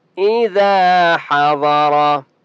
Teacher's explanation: अलैकुम इज़ा हज़र, इज़ा अलिफ मद्दा है, ज़ाल को एक अलिफ की मिक़दार खींच कर पढ़ेंगे और ज़ाल को नरमी के साथ पढ़ेंगे।